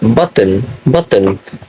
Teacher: the T sound is a glottal stop the sound is made by briefly stopping the air flow in by the throat